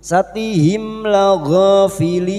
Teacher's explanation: Mim sukun bertemu lam idhar syafawi. Mim sukun dibaca jelas tanpa mendengung. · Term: idhar safawi